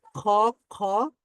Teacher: খ, খ, জিহ্বার গোড়া, এটা কিন্তু জিহ্বার গোড়াটা কিন্তু উপরের তালুর সাথে লেগে যাচ্ছে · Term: কফ